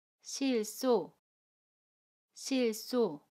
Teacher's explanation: 첫 번째 받침 리을은 그대로 발음하고요. 두 번째 받침 히읗은 다음에 오는 첫소리로 이동을 하고 시옷과 합쳐져서 쌍시옷으로 발음해요. 그래서 소가 됩니다.